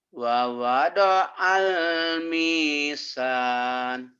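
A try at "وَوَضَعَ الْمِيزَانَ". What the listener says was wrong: bukan misan, mizan, zai.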